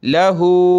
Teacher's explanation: उल्टा पेश और मद है तो खींचेंगे हा को